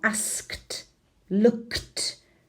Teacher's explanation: Sonido sordo k seguido de sordo t